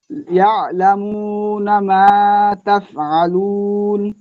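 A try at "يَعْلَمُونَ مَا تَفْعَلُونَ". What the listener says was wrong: হ্যাঁ, মাশাআল্লাহ। আলুন আর একটু টান দেন শেষে।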